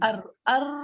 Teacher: کپ کپی اور لرزہ ہو جاتا ہے را میں، اور ایک میں کا ایک دوسرے ہے کہ را اور لام کی ادائیگی میں زبان ایک دوسرے کی مخرج کی طرف لوٹتی ہے.